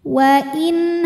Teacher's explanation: karena ada nun sukun menghadapi huruf halqi yaitu huruf ha ya huruf tenggorokan maka Nun dibaca dengan jelas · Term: izhar halqi